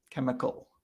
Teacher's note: the H is silent, or it doesn't make the ch sound that you might expect. It's more like a K sound. You can look at it like the H itself is silent in that case.